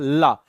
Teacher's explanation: जब हम ल का उच्चारण करते हैं तो ल में हमारी जीभ क्या होती है? दांतों के पिछले भाग में स्पर्श होती है।